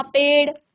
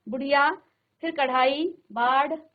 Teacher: मूर्धा को स्पर्श करती है और तुरंत नीचे गिर जाती है। बहुत जल्दी। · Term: अतिरिक्त व्यंजन